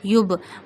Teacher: We have to show movement in ba because ba is sakin here. When jazm sign, this dal shaped sign comes on five letters, qaf, ta, ba, jim, dal, then you show clearly movement in these letters. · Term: kalkala letters